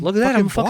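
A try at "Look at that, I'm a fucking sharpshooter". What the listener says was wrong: You just got to do that without the high pitched thing, and you got to be a little more angry too. You got a little more Southie.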